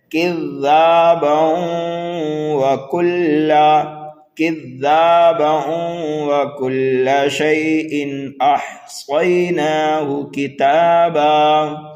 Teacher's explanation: ٹھیک ہے، تو یہاں پر کذابہ پر وقف کر دیا تو دو زبر کو الف سے بدل دیا، وقف بالابدال ہو گیا، لیکن ہم ملا کر کے پڑھنا چاہتے ہیں. دیکھیے یہاں پر واو متحرک ہے لیکن یہاں پر ہم واو مشدد بنا کر کے پڑھیں گے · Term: ادغام